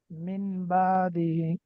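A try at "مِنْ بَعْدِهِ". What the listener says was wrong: নুন সাকিনের পর বা আসছে, গুণনা করতে হবে না, একটু গুণনা করতে হবে। গুণনার পরিমাণ কত? এক আলিফ। মিম বাদি বলে এক আলিফ গুণনা হইলো। মিম বাদি।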